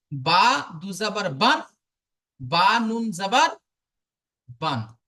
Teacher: দুটোরই আওয়াজ নাকের মধ্যে থেকে হয়। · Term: তানবিন